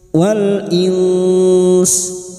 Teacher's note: bunyi nun sukun disamarkan dan mendengung selama tiga harakat. Lalu kita lunakkan dengan huruf sin. Karena kita memilih wakaf di sini, maka bunyinya wal ins. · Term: ikfa hakiki